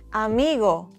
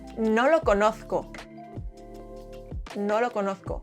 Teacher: In Spanish, O is short, round, and dry. Think of it as a single clean note and not two sounds like in English.